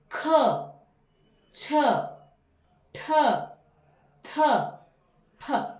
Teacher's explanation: ಅಷ್ಟೆಲ್ಲಾ ಉಸಿರನ್ನ ತೆಗೆದುಕೊಂಡು ಏನಾದ್ರೂ ನಾವು ಅಕ್ಷರಗಳನ್ನ ಉಚ್ಚಾರಣೆ ಮಾಡಕತ್ತಿದ್ರ ಅದಕ್ಕೆ ಏನಂತ ಹೇಳಿ ಕರೀತೀವಿ? ಆ ಮಹಾಪ್ರಾಣಗಳು ಅಂತ ಹೇಳಿ ಕರೀತೀವಿ.